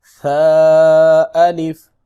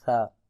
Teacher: ثا الف، تین ڈاٹس ہیں، تین نقطے ہیں، یہ ثا ہے، لیکن اس کی ایک ہی لیگ ہے، یہ دیکھیں، اس کو شین نہیں پڑھنا، یہ ثا ہے، اور اس کو نرمی کے ساتھ ادا کرنا ہے، اس کو سا بھی نہیں کہنا